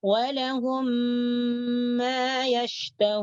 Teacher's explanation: Syafawi disebut syafawi karena ketika kita mengucapkan huruf mim di sini, maka dua bibir bertemu. Ada di antara dua bibir. · Jadi mim yang pertama nih, mim yang sakinah nih dimasukkan ke dalam mim yang kedua atau mim yang hidup. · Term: idgham mislain syafawi